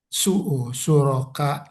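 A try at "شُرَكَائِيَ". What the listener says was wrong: Nah, sebenarnya ini suraka i bener. Cuman kata ada alif lam dia harus dihidupkan. Hidupkannya dengan apa? Dengan kasroh.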